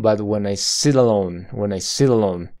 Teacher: la flap te en inglés toca la parte rugosa detrás de los dientes superiores